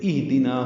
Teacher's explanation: حمزہ اور ہا دونوں اقصی حلق سے ادا ہوتے ہیں، واضح طور پر حمزہ کو ادا کرنا ہے، ہا سے ملانا ہے۔ ہا ساکن ہے، اس پہ ہمس ہوگا، حمزہ بالجہر ادا ہوگا اور ہا میں ہمس ہوگا۔ دال کی زیر کو جلدی پڑھنا ہے، دی پڑھنا ہے، دے نہیں پڑھنا۔